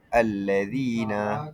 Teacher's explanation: Contoh allazina qad pada allazina nun itu bertasydid. Cara baca dengung sempurna dua harakat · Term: ghunnah musyaddadah